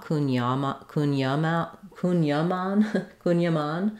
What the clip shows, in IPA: ˌkuŋjaˈman